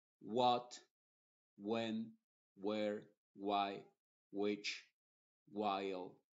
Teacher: la W se pronuncia como W y la H es muda